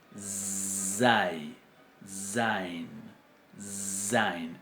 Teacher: Porque no es una Z propiamente dicha, sino es lo que se llama una fricativa alveolar sonora o sibilante, que es zai, zain, zain.